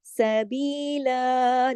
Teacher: با کے ساتھ جو ہے تو یا مدہ ہے، دو حرکات کھینچے گا